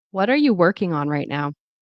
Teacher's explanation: the stress on working right now